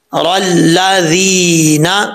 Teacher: یا مدہ ہے ذال کے بعد، 1 الف کی مقدار اس کو لمبا کر کے پڑھیں گے